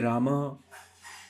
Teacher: उच्चारित होता है और विसर्ग से आपको याद रखना ह क्योंकि विसर्ग के उच्चारण में ह का उच्चारण होता है हल्के से ह का उच्चारण होता है